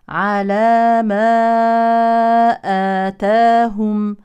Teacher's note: انفصل الالف عن الهمزه بين كلمتين اذا هو مد منفصل